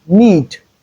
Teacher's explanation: The next one is need. In need, the last sound is D, which is the voiced form of the alveolar plosive sound.